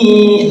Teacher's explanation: nunnya bertasydid dibaca gunah ditahan